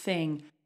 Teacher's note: however I'm going to change the color because this one is an unvoiced th so this one goes thing no voice there's no buzz in my throat thing okay so let's try this one let's go from here